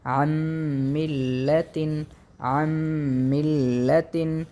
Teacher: تشدید کی صورت میں زیادہ زور اگلے والے حرف پر دیا جاتا ہے، اس جگہ میں میم مشدد ہے، زیادہ زور میم پر دیا جائے گا، جیسے کہ عن ملتن، عن ملتن، عین اور نون، ہم نے عین کو میم کے ساتھ پڑھیں گے اور نون کو ہم جو ہے مدغم کر دیں گے میم کے ساتھ، عن ملتن، چونکہ نون ساکن ہے اور اس کے بعد میم آ رہا ہے اور میم حروف ادغام میں سے ہے۔